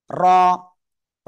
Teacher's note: র মোটা আওয়াজে পড়তে হয়